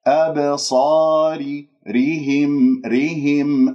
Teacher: الراء مرققة، لماذا؟ لأنها مكسورة، وأبين الكسرة لا أختلس الكسرة، والهاء مكسورة والميم مظهرة.